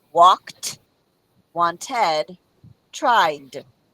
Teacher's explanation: so walked has a t sound wanted it's that Ed and then tried is the D